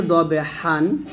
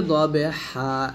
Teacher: হ্যাঁ, এটা যদি আমরা ওয়াকফ করি তাহলে বলবো ওয়াল আদিয়াতি দবহা। এই যে এখানে আছে দবহান, থামলে হবে দবে হা, 1 আলিফ টান হবে